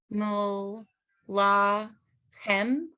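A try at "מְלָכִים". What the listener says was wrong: Chim. Melachim. It's a little dot. One dot. E.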